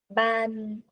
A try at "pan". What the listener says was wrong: pan, chữ này em phải đọc giống chữ Sapa chứ không phải là bờ đấy nhá. Pan, 不是，không phải là pan pan, là bờ ơi, pan, 对吧？pan, cái này phải bật hơi cho cô nào. Pan, pan